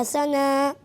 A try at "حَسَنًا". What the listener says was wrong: دیکھیں سب سے پہلے آپ نے اس بات کا خیال رکھنا ہے کہ یہاں سین لکھا ہوا ہے، ثا نہیں لکھا ہوا، ٹھیک ہے۔ جن حروف میں سیٹی کی آواز آتی ہے اور جن حروف میں سیٹی کی آواز نہیں آتی اس میں آپ نے کافی مسٹیک کی، تو آپ نے اس کی پریکٹس کرنی ہے، تکرار کے ساتھ پڑھنا ہے، ٹھیک ہے۔ زا، سین اور صاد میں سیٹی کی آواز آتی